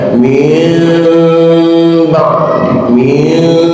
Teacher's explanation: Lihat di dalam kitab tajwid, warabiul iqlab indal ba'i mimman bir gunnatin ma'al ikhfai. Memang suaranya mim gunnah, mim, tapi harus ingat ada kata ma'al ikhfai, ada ikhfatnya. Jadi bukan mim tidak terkatut 100%, tapi pelan-pelan mim ba'di mim, itu ikhlas.